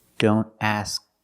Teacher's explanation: This happens when the K is between consonants. You make the position of the K, but you don't release the sound.